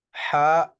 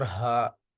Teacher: ہا جو ہے یہ درمیانے حلق سے ادا ہوتی ہے، اور یہ جو ہا ہے یہ ادنا حلق سے ادا ہوتی ہے